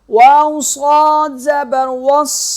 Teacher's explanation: واو کو جب صاد کے ساتھ ملائیں گے تو صاد سختی سے ادا ہوگا اور موٹا ادا ہوگا